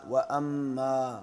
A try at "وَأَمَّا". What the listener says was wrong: ماں نہیں. وَأَمَّا ایک ہے ماں، ایک ہے میں، تو آپ نے میں کہنا ہے، ماں نہیں کہنا.